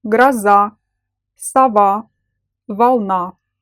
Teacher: The letter “O” in the unstressed syllable is pronounced as [A]. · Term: vowel reduction, Vowel reduction